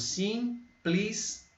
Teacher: Pli e ti no final. O E acaba ficando com som de I.